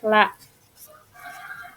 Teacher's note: bunyi sampingan terjadi ketika udara mengalir melalui sisi kiri dan kanan lidah. Sementara bagian tengah lidah ini melemper eh menempel pada langit-langit mulut.